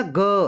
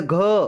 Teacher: देखो जो तीसरा चौथा पांचवा, देखो ग जब बोले ना ग, तो आपके जो गले में जब इसका उच्चारण करेंगे तो गले में कंपन होता है, जैसे घ तो कंपन होता है